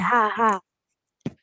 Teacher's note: ये छोटी हा है इसीलिए हम इसको हल्के से पढ़ेंगे हा मतलब हल्की हवा आएगी बाहर